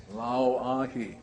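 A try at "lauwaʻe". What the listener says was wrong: Lao Wa'e. See, the A in this last word is kind of pronounced Wa'e. This is the Okina, or the glottal sound.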